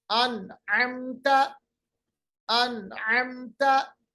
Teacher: अन का मतलब होता है जाहिर किया, आवाज को हमने नाक के बासे में नहीं लिया, खैशूम में नहीं लिया। अन अमता, अन अमता, तो नून की आवाज जाहिर हुई। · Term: इजहार